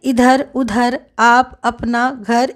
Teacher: निरनुनासिक जो है वो केवल मुंह से बोले जाने वाला सस्वर वर्ण है, जैसे इधर, उधर, आप, अपना, घर इत्यादि।